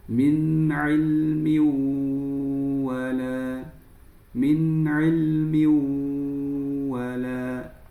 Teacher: langsung masuk ke huruf wau dan digunahkan · Cara membacanya, masuk ke huruf waw, masukkan ya, fathah tanwin langsung masuk ke huruf waw dan digunnahkan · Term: Idgham bighunah, idgham bi gunnah